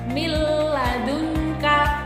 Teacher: itu kita baca dengan idgham bila gunnah atau dengan tidak mendengung